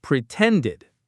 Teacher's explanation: The stress, the power is on that middle syllable, ten.